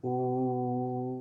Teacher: देखिए गले के करना, गले के अंदर कंठ के ऊपर और जीभ के पीछे वाले हिस्से पे जा रहा है, ऊ करके लौट जा रहा होगा। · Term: संवृत